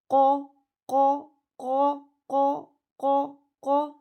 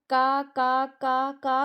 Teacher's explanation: आपकी जुबान की जड़ ऊपर तालू के नरम हिस्से से लग रही है। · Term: मोटा कफ